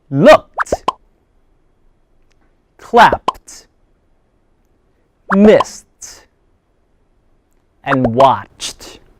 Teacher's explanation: The last final ed ending sound is pronounced as t.